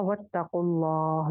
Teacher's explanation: यहाँ पे लफ्ज़ जलाला मोटा रहेगा